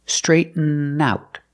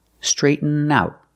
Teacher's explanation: Link the N to the out.